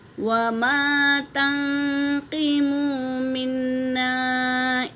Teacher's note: نون ساکن کے بعد قاف آیا تو اخفا ہے میری بہنوں، اور نون پر تشدید ہے تو غنہ ہوگا، اور یہاں پر لام پر کیا ہے؟